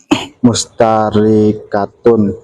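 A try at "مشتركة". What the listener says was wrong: Mustarikatun, jangan mustari, lu penggal-penggal apa?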